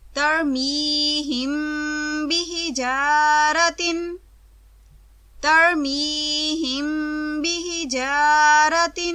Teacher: میم ساکن جو با متحرک سے پہلے ہو، اس پر آواز کو ٹھہرا کر لمبا کرتے ہیں